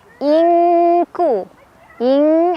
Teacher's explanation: Ing ada ikhfa ab'ad karena ada nun sukun bertemu huruf kaf. Cara bacanya nun sukunnya dibaca samar sambil tetap ada dengungannya. Jadi kita tetap nahan dulu ya, disamarkan sambil berdengung. · Nah, untuk ikhfa aqrab ini, untuk nun sukun ketemu kaf, tingkat kesamarannya itu lebih kecil dibandingkan dengungannya. Jadi lebih besar dengungannya.